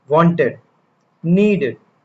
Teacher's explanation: The ed ending on regular past tense verbs is actually pronounced three different ways, depending on the sound before it. After a T or D sound, ed gets its own extra syllable.